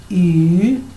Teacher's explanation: Y esta U, pero con diéresis, en chino se dice como si fuera la combinación de la I y la U juntas. Entonces se dice Y.